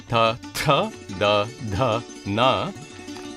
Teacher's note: the dentals behind the front teeth